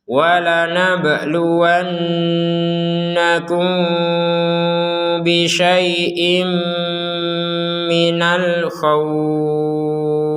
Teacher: Ada mim sukun bertemu dengan ba, maka kita bacanya dengan samar.